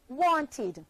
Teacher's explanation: verb w-a-n-t want becomes the past tense verb e w-a-n-t-e-d which is pronounced wanted forming two syllables want and id wanted let's try another one the verb n-e-e-d need becomes n-e-e-d-e-d